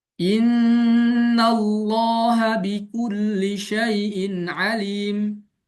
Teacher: Alim pertama wakof, berarti alim wakof, lalu bil qasar doang dengan 2 harokat.